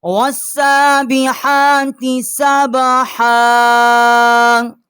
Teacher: واو کو سین کے ساتھ مشدد کیا ہے، سین کے اوپر کھڑا زبر ہے، اور ہا جو ہے اس کے اوپر بھی کھڑا زبر ہے، ایک الف جتنا جو ہے یہاں آواز ہم نے بلند کی ہے۔